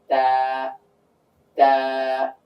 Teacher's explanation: তো এই তাটা উচ্চারণ করতে গিয়ে আমাদের জিহ্বার আগাটা উপরের তালুর সঙ্গে চলে যাবে, তালুর সঙ্গে লেগে উচ্চারিত হবে